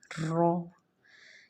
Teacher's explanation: موٹا پڑے گی اور وائبریشن کی آواز آنی چاہیے